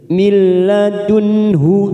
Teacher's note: nun sukun bertemu ha idhar halki, kita baca jelas tanpa mendengung